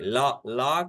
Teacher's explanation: ला के उच्चारण के समय जिह्वा का अगला हिस्सा मसूड़े को छूता है। देखिए, मसूड़े को स्पर्श करता है और वायु जिह्वा के दाहिने और बाहिने स्पर्श से बाहर ला ला करते समय दाहिने और बाहिने से बाएं से निकल रही है। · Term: पार्श्विक ध्वनि